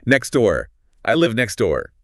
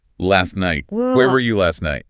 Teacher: So, we drop the T entirely.